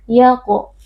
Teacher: Cara membacanya adalah dengan memantulkan suara. Ya qo. Di huruf tafkhim atau huruf tebal kita baca dengan mengangkat pangkal lidah. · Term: qalqalah sughra